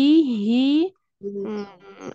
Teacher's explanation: kasih kekuatan pada ha-nya karena ha itu punya sifatnya lemah